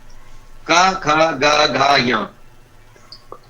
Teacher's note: जितने भी कवर्ग के हमारे व्यंजन है वो सब कंठ से, कंठ है, का, खा, गा, घा, या, इनको हम बोलते हैं कंठ, जो कंठ से बोलेगा।